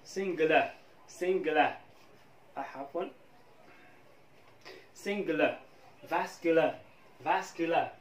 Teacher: هذا الـ R قد لا يبدو في نطق الـ Irish accent